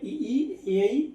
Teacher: अग्र स्वर में हो गए इ ई ए तो आगे के भाग से बोले जा रहे हैं।